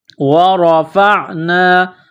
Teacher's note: را کے اوپر زبر ہے، را کو موٹا کرنا ہے، فا کو عین کے ساتھ ملانا ہے، عین گلے کے درمیان سے زور لگا کر عین کو نکالیں گے، پڑھیں گے۔